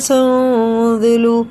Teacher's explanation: اخفا اور غنہ، نون کی آواز کو ناک میں لے جا کر 1 الف کے برابر کھینچ کے پڑھنا